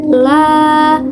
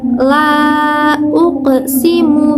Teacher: ketika kita mengucapkan la, nah lidah kita yang pertamanya menempel itu akan menjauh ataupun akan terpisah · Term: infitah